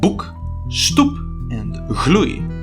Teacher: Oe seems to be short before a k, p, and j sound.